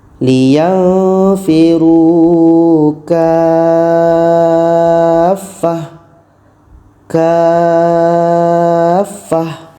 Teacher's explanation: ka ini kita panjangkan 6 harkat baru masuk ke huruf yang ada tasydid. Setelah itu ta ini kita ubah menjadi huruf ha yang berbaris sukun atau mati. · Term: tamarbutoh, mat lazim kilmi musaqqal